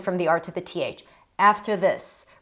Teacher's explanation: when you have this schwa r and then a th like after this, make the r very light